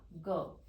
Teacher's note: जो ग व्यंजन है ये हमारा कंठ की सहायता से बोला जाता है